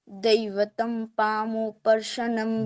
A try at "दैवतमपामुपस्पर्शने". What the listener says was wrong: दैवतम नहीं बोलना है, दैवतम नहीं बोलना है। दैवतम बोलना है तो अपामुप बोलना पड़ेगा। तो दैवत जैसे लिखा है, दैवतमपामुपस्पर्शने